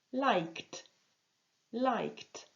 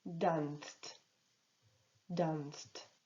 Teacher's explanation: Quand un verbe se termine donc par un son non vibrant, le ed se prononce par le son non vibrant t